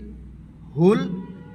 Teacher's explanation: হা সিনা হইতে আদায়